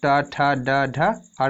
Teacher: ये हमारा मूर्धा से बोला जाता है।